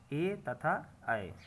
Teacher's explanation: ए का उच्चारण स्थान कंठ तथा तालू है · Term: कंठ तालु